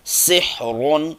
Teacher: ہا کو اس کے مخرج سے ادا کرنے کی کوشش کریں اور را کو موٹا پڑھیں